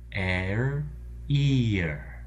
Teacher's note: if we take that same set of sounds, air, and raise the first sound from eh to e, we get ear.